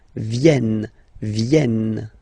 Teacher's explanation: this classic ending n for the third person of the plural is here but phonetically doesn't exist so you don't pronounce it